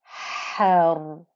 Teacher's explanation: you can hear the noise of the ha, quite breathy, isn't it? And the ra here has its own sukoon anyway, and because we're coming at it with the fatha, the ra here is thick and heavy.